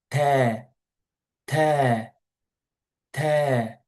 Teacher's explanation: Ta is released from the tip of the tongue and the gum behind upper front teeth. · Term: ta sound